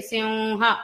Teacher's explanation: సింహ అని పలుకుతున్నప్పుడు పెదాలు 2 కలుస్తాయి. పెదాలను కలపకుండా మకారాన్ని పలకరానికి ప్రయత్నించండి, సింహ అని వినిపిస్తుంది. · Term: నాసిక ద్వారా వకారం